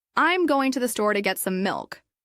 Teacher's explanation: Notice how to becomes tu or disappears completely. The stressed words are going, store, get, milk.